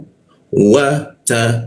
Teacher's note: huruf ta maka ujung lidah tempelkan ke gigi ada sedikit desis